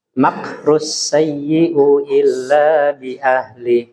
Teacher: huruf kaf tidak boleh dikolkol. Ya, dia hanya hamas, keluar udara ya.